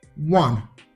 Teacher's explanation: So the word one, even though it starts with the letter O, the letter O is not pronounced. What we pronounce is the W sound. Yeah. So that's why we say a one day event, not an one day event.